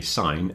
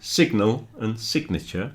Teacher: you don't hear the G, but you do in signal and signature